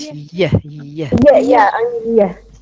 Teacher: when you pronounce yeah, you feel completely that the that the blade of the tongue is against the hard palate. So that's why I say that it is a palatal. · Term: pure palatal